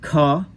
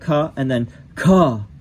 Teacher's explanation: the first one, the sound is produced in the throat.